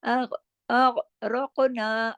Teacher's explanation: قاف موٹا بھی پڑھا جائے گا، قاف پہ جماؤ نہیں بلکہ ہلاؤ کے ساتھ، یعنی کلکلے کے ساتھ